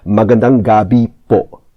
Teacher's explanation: gabi, the word for evening, the stress is on the I